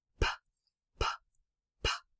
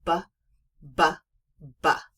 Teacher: And so the P is a whispering cat. The P isn't making any sound with the voice at all.